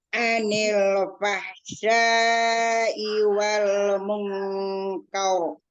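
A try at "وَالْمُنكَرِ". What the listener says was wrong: Munkar, kar, bukan kaur. Lidahnya aja di pengaranya kar. Tebalin, tapi tidak melibatkan bibir. Ya, tebalin kar, kar. Kan huruf-nya itu pakai syafatain, kaur gitu ya. Tapi kar saja, kalau misalnya bingung tinggal ka fathah ka dulu aja.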